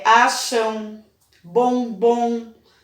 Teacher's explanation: quando a sílaba termina com M ou N, eu estou pronunciando ela nasal